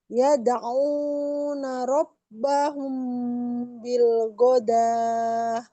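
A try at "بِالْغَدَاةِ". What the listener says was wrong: Ikhfanya bagus, jadi temponya udah bagus banget. Cuma sedikit aja ghain. Ghain itu nggak nempel seperti kita bilang huruf G, bukan bil go, tapi bil gha, gha.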